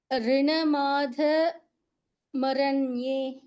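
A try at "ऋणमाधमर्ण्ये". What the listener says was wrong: ಮರ್ first ಯು can speak ಮರ್ ದೆನ್ ಮರ್ ನಾಟ್ ಮರ ಮರ್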